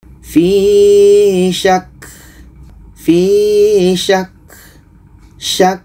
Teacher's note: Dan ini contoh yang ketiga, ka yang ada tasydid. Ka tasydid ketika dia dimatikan adalah sifatnya salah satunya hamas. Ada angin yang keluar.